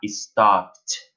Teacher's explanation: Então, eu tenho, por exemplo, a palavrinha stop, que quando esse sonzinho de stop, essa finalização, o último som da palavra stop, não tem vibração nas cordas vocais, então, quando eu adicionar o ED, eu vou ter o sonzinho de T. Aí vai ficar stopped.